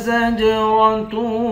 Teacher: زا کو جیم کے ساتھ ملا کر جیم پر قلقلہ کریں گے، تا کو واو کے ساتھ ملا کر واو پر غنہ کریں گے، واو کے بعد الف ہے، الف حروف مدہ ہے، ایک الف کی مقدار کھینچیں گے، آخر میں گولتا ہے، گولتا پر جب وقف کرتے ہیں گولتا ہاں بن جاتی ہے۔